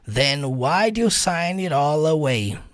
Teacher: Aí você vai juntar esse it all. Você vai juntar o all com away. Vai ficar it all away, que é o jeito que ele fala.